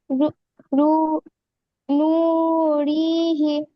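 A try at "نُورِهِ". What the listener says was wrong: নুরি, রটা টান হবে না, হাটা টান হবে খাড়া জে। আচ্ছা, তাহলে প্রথমটা কি মাদ্দা হলো? আর শেষটা? খাড়া জের কিসের সমতুল্য?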